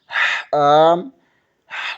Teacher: جیم، وسط زبان بالمقابل اوپر کے تالو سے لگے تو جیم ادا ہوتا ہے۔ حا، حلق کے درمیانی حصے سے ادا ہوتا ہے۔ خا، حلق کے اوپر والے حصے سے ادا ہوتا ہے۔